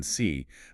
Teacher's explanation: for the long E sound, as in C, the tongue has to be incredibly high up and pushed forward in the mouth, almost like the spine of a camel's back.